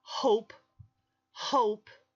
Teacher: If you put your fingers on your throat as you say the word hope, when you get to that p sound at the end, your vibration in your vocal cords is not there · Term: unvoiced sounds